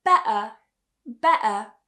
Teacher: you might also hear some speakers in the uk using something called the glottal stop so instead of saying better or better they will say better